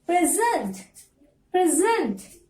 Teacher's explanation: As it is a verb, you have to stress on second part. · For noun, you have to stress on syllable number 1. For verbs, you have to stress on syllable number 2.